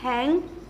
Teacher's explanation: नाक से भी हवा निकलती है और मुंह से भी हवा निकलती है। तो जैसे कि हम यहाँ पे वर्ड बोलने जा रहे हैं, जैसे कि हैंग। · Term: नेजलाइज साउंड